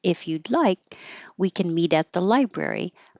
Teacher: you're not going to hear the K because you're going to hold it in the K position